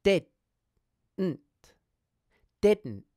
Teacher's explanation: So when we pronounce didn't in this way, we put our tongue into the d position and hold momentarily, but we don't release. Instead, we just move on to the next syllable, which is nt. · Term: half pronounced